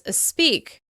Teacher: to add an /i/ sound before /s/, or to add a quick sound between consonants, or to add a bonus sound at the end of a word in order to transition between words.